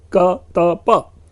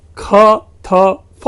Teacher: वैदिक संस्कृत की ये अल्प प्राण ध्वनियां अवेस्ता में संघर्षी ख थ फ बन जाता है